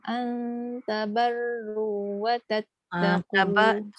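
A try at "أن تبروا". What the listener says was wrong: Tabar tu jangan tabarru, dia jadi nipis. Tabarru.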